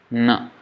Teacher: Na is nasal sound. The sound is entirely coming from the nose. That's why you try saying na with nose closed.